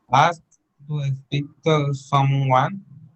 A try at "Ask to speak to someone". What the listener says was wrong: Ask to speak, not to speak. Remember not to use E at the beginning. There's no E, speak. Ask to speak to someone. Ask to speak to someone.